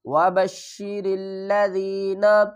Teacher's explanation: ذال کو یا سے ملائیں گے، یا ساکن سے پہلے زیر ہے، ایک الف کی مقدار کھینچ کر پڑھیں گے، حروف مدہ ہے